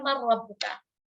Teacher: Ketika mereka menjumpai huruf-huruf mim, nun, waw, ya, lam, ra, mereka akan mengidghamkan atau meleburkan, memasukkan huruf nun itu ke dalam huruf berikutnya.